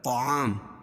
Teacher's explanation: تو کو موٹا پڑھیں گے کیونکہ حروف مستعلیہ میں سے ہے